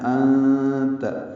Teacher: انت میں نون ساکن کے بعد تا آنے کی وجہ سے اخفا ہو رہا ہے، کیونکہ تا حروف اخفا میں سے ہے.